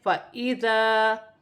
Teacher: الف کے نیچے زیر کی حرکت ہے فَإِذَا، اور الف مدہ بھی بن رہی ہے، اسے ایک الف کی مقدار کھینچ کر پڑھا جائے گا۔